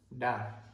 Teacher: Then we have the D. The D's further back, almost on your palate.